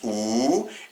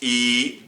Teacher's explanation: le waw qui se prononce ou, et le ya qui se prononce i, donc longue voyelle